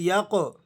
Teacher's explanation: اس قوف پر آپ قلقلہ ادا کریں گے